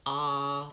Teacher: my mouth is very open and my tongue is back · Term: ah vowel